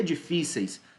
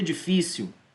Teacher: A penúltima sílaba é a tônica e é terminada em ditongo. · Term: paroxítona